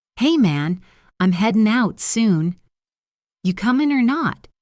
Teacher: Notice the dropped G sound at the end of headin' and comin'. This is very common in many American accents.